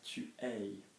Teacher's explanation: Now remember, for French to be clear, we need an open mouth, tu es, okay? We're not pronouncing the S because there's no vowel after it